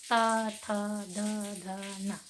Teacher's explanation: त इसको कहा गया है दंतय वर्ण, क्योंकि इस वर्ण के उच्चारण करने पर जीभ जो है दांतों से टकराती है, दांत से टकरा रही है।